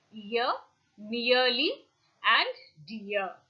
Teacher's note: During articulation of the diphthong ear, the glide is from front unrounded vowel just above the half close position and moves in the direction of a central unrounded vowel between half close and half open